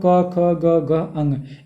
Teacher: क वर्ग मतलब क ख ग घ अंग, इनका उच्चारण स्थान कंठ है